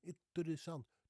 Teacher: Now, you heard that there's the R in there, right? It's the rolling R, which I love so much. But it's kind of a short R.